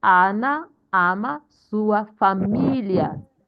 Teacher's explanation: we are stressing the I in familiar because the I in familiar has accent